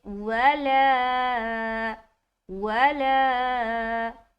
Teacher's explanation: واو کو ہم جل چھوڑ رہے ہیں، لا کو ہم کھینچ رہے ہیں، کیونکہ یہاں پر الف مدہ کا قاعدہ ہو رہا ہے